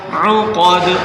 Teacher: عین کو حلق سے نکالیں، قاف کو موٹا کریں، دال کے اوپر قلقلہ کریں